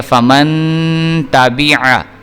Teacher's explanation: تا جو ہے یہ حروف حلقی میں سے نہیں ہے بلکہ حروف اخفاء میں سے ہے، اس لیے ہم نے یہاں پہ غنہ کرنا ہے